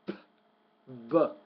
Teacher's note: Now, the P sound is a voiceless consonant. The B is a voice consonant.